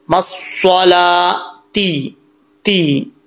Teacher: لام کو لمبا کریں گے، واؤ پڑھا نہیں جائے گا